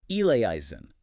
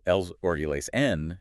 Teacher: Right, but the instructions say, and I'm quoting here, sung such that eleison sounds like 2 syllables. You have to crush 4 beats into 2. So it becomes something like els or eles n.